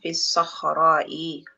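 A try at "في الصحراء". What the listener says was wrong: sahra. Sahra itu pakai ha dia. Di padang pasir sahra.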